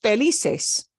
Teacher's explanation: that means we punch the second to last syllable